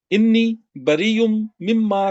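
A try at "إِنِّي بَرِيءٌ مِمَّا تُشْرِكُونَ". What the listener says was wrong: नहीं इन्नी नहीं है, अन्नी।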